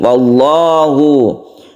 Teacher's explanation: lafaz Allah lafzul jalalah yang dibaca tebal